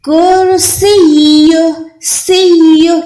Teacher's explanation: لیکن یہاں پر آپ نے کیسے پڑھنا ہے, کرسیو, سیو, ٹھیک ہے. یا پہ پروپر شد ہے تو یعنی یا 2 دفعہ ہے, ایک سین کے ساتھ ملائیں گے, دوسرا اپنے پیش کے ساتھ